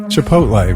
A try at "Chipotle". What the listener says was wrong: There is. I have it too. The Ohio O. We don't say Chipotle. We say Chipotle. That's just an exaggerated version.